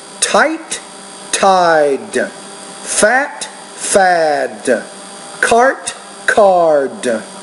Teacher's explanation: fat, fad, Not bad, but remember the D is a voice consonant, the T is a voiceless consonant. So the vowel before these two sounds, one will be shorter, the other is longer